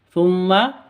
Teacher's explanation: Thumma, di sini ada mim tasydid. Mim tasydidnya berdiri sendiri, berarti bacaan gunnah musyaddadah. Cara bacanya dengung 2 ketuk.